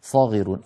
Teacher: انتبهوا إلى كلمة صاغرون في آخر الآية 29 حتى يعطوا الجزية عن يد وهم صاغرون. الصاد من حروف الاستعلاء والإطباق، وهي مفخمة ومفتوحة وبعدها ألف